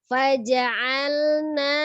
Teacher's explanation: huruf ain dari tenggorokan bagian tengah